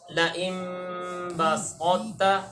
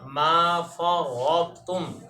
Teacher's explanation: طا کی صفت استعلاء اور اطباق کو باقی رکھ کے ادغام کریں گے تا میں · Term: ادغام میں ناقص